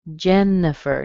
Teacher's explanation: Notice you don't hear the I. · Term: schwa